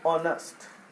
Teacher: H අකුර මුලින් තිබ්බා කියලා අපි H අකුර pronounce කරන්නේ sound කරන්නේ නැහැ. එතකොට එයා පටන් ගන්නෙ sound එක O.